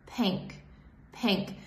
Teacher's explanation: so my tongue is supposed to be lower more forward and just more relaxed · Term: short e sound